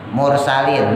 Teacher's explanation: Tebal karena ro-nya mati jatuh setelah harokat doma.